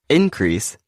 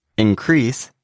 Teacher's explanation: the noun increase has the stress on the first syllable and the verb increase has the stress on the second syllable